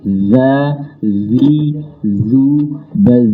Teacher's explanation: Zal itu kalau dia dibaca harus mengalir suara. Za, zi, zu, baz.